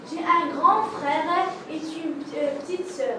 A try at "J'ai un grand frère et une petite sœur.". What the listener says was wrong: Il n'est pas préférable de faire la liaison avec et. Par contre, EST, le verbe être, oui.